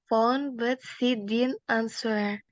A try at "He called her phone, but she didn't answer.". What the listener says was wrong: Yeah, answer. Langsung. Answer.